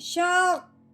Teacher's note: یہاں پہ قوف مشدد ہے، اس کو ہم نے نہیں ہلانا، اس کو ہم نے دبانا ہے